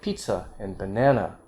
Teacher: you could have stress on the second from the end like pizza and banana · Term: minus one stress